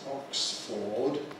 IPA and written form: ˈɒksfɔːd (Oxford)